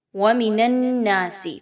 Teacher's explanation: وَمِنَ النَّاسِ، غور کیجئے نون پر، نون مشدد ہے، نون تشدید کے ساتھ موجود ہے۔ نون اور نون کو آپس میں دونوں کو ملاتے ہوئے مضبوطی کے ساتھ غنہ کرتے ہوئے پڑھیں گے۔ نون زبر الف نا، الف مدہ ہے، یہاں پر 2 حرکت کے برابر لمبا کریں گے۔